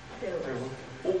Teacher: Con una O más cerradita, más aguda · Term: O aguda